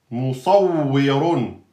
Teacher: donc le waw est aminci entre 2 emphatiques. Mou, pas mot, mou.